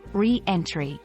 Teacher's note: the word is pronounced with an emphasis on the re making it re-entry